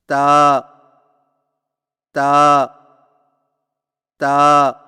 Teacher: تا کی ادائیگی میں زبان کی نوک کو سامنے والے اوپر کے دو دانتوں کی جڑ سے لگا کر باریک آواز میں پڑھیں